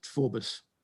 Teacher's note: was until the time of of until the early 19th century it was always pronounced forbus with the emphasis on the first syllable